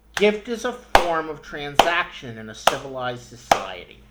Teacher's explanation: those stressed syllables come at approximately even points throughout the sentence